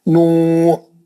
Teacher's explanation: آپ نوح پہ وقف کریں گے، نوح پہ وقف کریں تو تنوین پوری نکال کے آپ جزم لگا کے ساکن کر دیں، نوح، تنوین ختم ہو گئی.